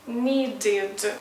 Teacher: So the verb need finishes with d sound, d. That is why you need to pronounce id, needed.